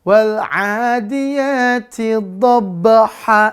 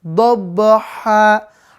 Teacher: Sifat ba-nya jangan lupa mantul.